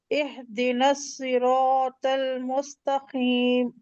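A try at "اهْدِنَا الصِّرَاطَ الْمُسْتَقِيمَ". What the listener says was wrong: देखो टीम, ये कितने हर वक्त खींचना है? टीम को 2 खींचना है, 4 खींचना है? लेकिन आपने 4 नहीं खींचा, ठीक है। हमजा पे जेर है, एह कैसे आएगा? एह जेर, जेर की आवाज ई की होती है ना, ई की आएगी आवाज ना।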